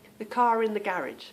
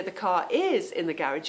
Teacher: we do pronounce the R when there is a vowel that follows.